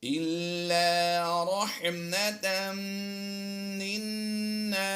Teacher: اور میم مشدد میں ہمیشہ غنہ ہوتا ہے، ویسے یہاں پر تنوین کے بعد حروف یرملون میں سے میم آیا، ادغام مع الغنہ کا قاعدہ بھی لگتا ہے، ہم غنہ آنی کرتے ہوئے دونوں کی آواز دیں گے